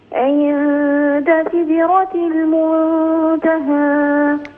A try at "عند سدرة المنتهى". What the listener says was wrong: قلقل الدال من غير أن تكسريها. سدرة لا تكسري الدال، لا تقولي سدرتي، الدال مقلقلة لا نكسرها. ولا نقول سيدة، انتبهي.